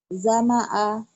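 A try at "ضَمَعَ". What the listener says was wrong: Zo. Bukan za. Zoma'a. Zo. Oh, ini orang Seberang ya. Kalau orang Seberang umumnya gitu. Nggak bisa zo. Misalnya jama'a. Zoma'a.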